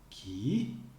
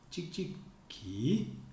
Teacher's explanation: the intonation looks like when we go down the wave and go up really high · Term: intonation of the ki clause